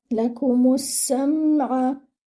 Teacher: Meme should join with the scene. The scene should be with the whistling sound. It should be light. Your scene should join with the meme.